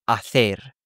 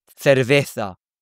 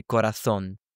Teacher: That th is how you pronounce C's and Z's in Spanish from Spain. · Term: lisp